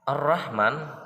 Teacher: harokat ar-rahman hukumnya Idgham Syamsiah karena ada lam ta'arif diikuti rok cara bacanya huruf lam dimasukkan ke huruf ro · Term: idgham samsiyah